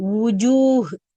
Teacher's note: வாவ் நம்ம உதட்டிலேருந்து மட்டும்தான் உச்சரிக்கணும். உஜூன்னு நம்ம உள்ள இறக்கணும்டா அது ஹம்சாவுடைய சவுண்டு.